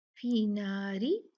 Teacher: ये रा जो है ये बारीक पड़ा जाएगा।